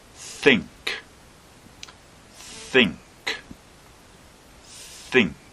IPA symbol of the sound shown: θ